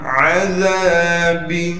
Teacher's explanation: عین کو صاف کر کے گلے سے نکالنا ہے · دال کے بعد الف مدہ ہونے کی وجہ سے دال کو ایک الف کی مقدار کھینچیں گے